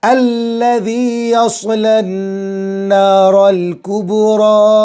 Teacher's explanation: रा पर खड़ा ज़बर है, रा को खींचेंगे और पुर भी होगी, स्वाद पुर।